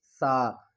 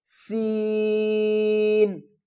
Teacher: ہم نے سا کو نرمی سے ادا کرنا ہے اور سین کو سیٹی کے ساتھ